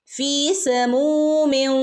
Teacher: മീമിന്റെ കൂടെ വൗ മദ് വന്നിട്ടുണ്ട്, അവിടെയും രണ്ടനക്ക നീട്ടിക്കൊടുക്കുക